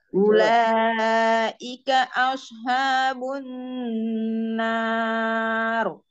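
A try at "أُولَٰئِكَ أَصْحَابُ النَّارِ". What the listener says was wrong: Haknya dia sempurnakan, Bun. Hak pedasnya belum keluar. Asha, asha. Asha, ha.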